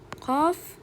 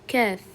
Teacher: Qof sal chuqurroqdan, kaf esa yuqoriroqdan chiqadi.